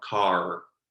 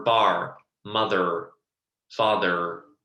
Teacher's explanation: the general American accent is rhotic. And what rhotic means is that the R is being pronounced.